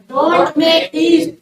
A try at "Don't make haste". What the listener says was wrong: हीस्ट नहीं, हेस्ट। Make हेस्ट। हेस्ट, हीस्ट, ई की मात्रा अलग है, ए की मात्रा अलग है।